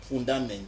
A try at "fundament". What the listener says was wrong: Oui, il faut prononcer le T.